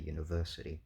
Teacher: You don't say ya-niversity. Um but clearly the primary stress is on verse, right? That's the stressed syllable